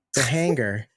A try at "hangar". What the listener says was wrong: Why are you hitting the hard G? Soften that G. Hanger. A hanger.